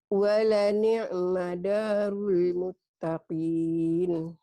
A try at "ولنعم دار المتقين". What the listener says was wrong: Iya, walani ma, bukan walina ya. Ini kalau nggak salah walina ma, ya bukan walani madarul muttaqin. ya. Nanti dilihat lagi ini kadang-kadang barisnya di atas gini. Kalau lihat baris ini walani ma ya, walani madar.